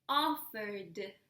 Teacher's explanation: Does it vibrate the final sound? Yes, it does. So the following sound should be a D.